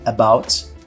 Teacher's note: ele é um som meio que mudo quase que mudo que é como se eu tivesse fazendo o som de ã